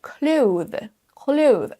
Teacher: un son TH, et ensuite on rajoute le son Z pour faire le pluriel. Clothes. Peu de natifs le prononcent de cette façon parce que ça prend un petit peu de temps.